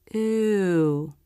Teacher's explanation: the back part of the tongue stretches up towards the soft pallet the front part of the tongue remains down lightly touching or just behind the bottom front teeth